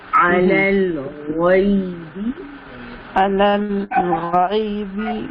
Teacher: غین کو ہیوی کرنا ہے، پیچھے سے زبان کو اٹھائیے